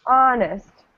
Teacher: Okay, so here the stress, yeah, this one is different. The stress is at the beginning.